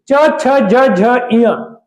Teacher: च छ ज झ य यह तालू की सहायता से बोला जाता है